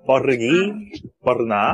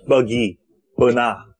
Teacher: Indonesia menekan R sound dan orang Malaysia tidak menekan R sound